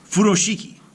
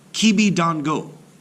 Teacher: they should be pronounced with equal stress on every syllable